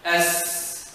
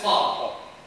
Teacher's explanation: Sin has extended. It's very soft to go on, to extend. But the ta, you cannot extend. It's just ta.